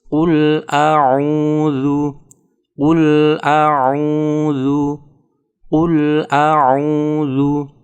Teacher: Ketika membaca qul, yang perlu diperhatikan adalah menjaga huruf qaf agar keluar sesuai dengan makhrajnya. Makhraj atau tempat keluar dari huruf qaf adalah pangkal lidah dekat anak lidah dengan langit-langit yang lurus di atasnya. Kecenderungannya kalau kurang teliti, huruf qaf ini akan berubah menjadi huruf kaf, di mana antara qaf dan kaf ini makhrajnya berdekatan.